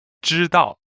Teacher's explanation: 知 is first tone and 道 is fourth tone.